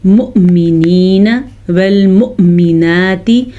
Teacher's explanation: مؤمنین میں حمزہ جھٹکے کے ساتھ پڑھا جائے گا کیونکہ واو پہ حرکت نہیں ہے بلکہ واو پہ حمزہ ہے, حمزہ ساکن ہے, تو یہ واو نہیں پڑھا جائے گا, حمزہ پڑھا جائے گا.